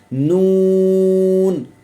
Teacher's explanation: मखर नंबर 10 लाम की जगह से लेकिन एक दाढ कम होकर जब ऊपर वाले तीन दांतों के मसूड़ों से लगे तो इससे नून अदा होता है